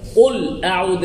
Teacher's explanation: লামে থামা যাবে না আওয়াজ জারি